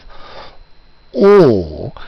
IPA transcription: ɔ: